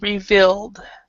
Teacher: when you have the past tense Ed usually it's a D sound and we do not say the e at all